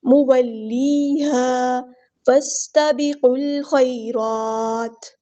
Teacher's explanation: فا کو ہم نے سین کے ساتھ ملا دینا ہے، حمزۃ الوصل ہمارا ڈراپ ہو جائے گا